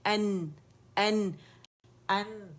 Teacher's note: اب حمزہ کا جو ایک حمزہ حمزہ فتح آ ہے وہ آپ نے پروناؤنس کرنا ہے اور دوسری حرکت نون ساکن کے تو نون پہ مکمل طور پہ جانا ہے اور اس کا نون کا اظہار کرنا ہے